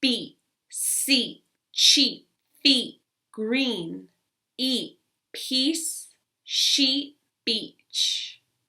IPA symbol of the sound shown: i: